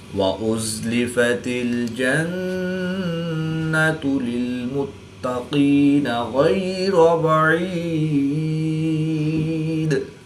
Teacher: قاف اور غین حروف مستعلیہ میں سے ہے تو ان کو پر یعنی موٹا پڑھیں گے۔ را کے اوپر زبر ہے تو اس لیے را کو پر یعنی موٹا پڑھیں گے۔